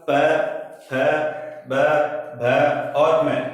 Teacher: तो इस प्रकार हम कह सकते हैं कि पे वर्ग बोलेंगे तो हमारा पूरा होठों का स्पर्श होगा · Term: ओष्ठ